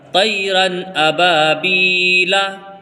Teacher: جب ہم الگ الگ پڑھتے ہیں تو الف بھی پڑھا جائے گا، لیکن جب ہم اس کو پورا ایک ساتھ ملا کے پڑھیں گے تو یہ الف نہیں پڑھا جائے گا، اور پھر یہ را 2 زبر رن اور یہ حمزہ زبر آ۔